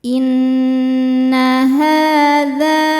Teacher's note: Sebab ada alif yang sebelumnya berharakat fathah. Cara bacanya panjang dua harakat. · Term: mad thobi'i zohiri